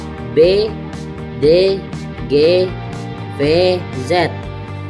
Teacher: Jadi, pita suara bergetar saat menghasilkan bunyi. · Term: bersuara